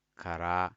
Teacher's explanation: So I stay short on ka and longer on ra.